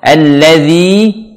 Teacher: Alladzi pastikan setiap zal yang seperti ini pastikan lidahnya keluar di ujung lidah sedikit, ujung lidah dengan bertemu dengan ujung gigi seri atas. Alladzi sempurnakan dengan menyempurnakan kasrah.